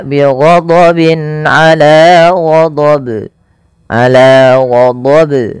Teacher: Yang benar adalah tidak menambahkan hamzah dan dia harus memantul.